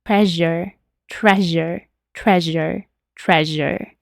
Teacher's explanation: Este sonido es básicamente una sh, pero voiced, que recuerden es la vibración. Entonces hacemos shh y tratamos de que vibre nuestra garganta.